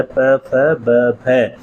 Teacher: हमारे दोनों ओठ आपस में सट रहे होते हैं। जब बंद होते हैं तो जो वायु निकल रही है उसे अंदर से बाहर निकलने के लिए बल लगाना पड़ता है, फोर्स लगाना पड़ता है, इसलिए वहाँ से उच्चरित होने वाली जो ध्वनियाँ होती हैं वो क्या कहलाती हैं, वो बलाघाती ध्वनियाँ कहलाती हैं।